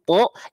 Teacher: tapi karena si pangkal lidah naik, ya, keluarnya jadinya vokal O.